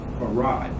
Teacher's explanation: There's two syllables in that name, Farad. In fact, the second syllable is louder than the first syllable.